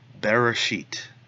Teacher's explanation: that schwa is a very short sound almost undetectable